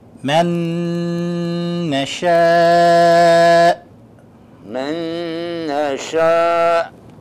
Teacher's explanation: we combine the two noons into one noon, and we hold it for 2 seconds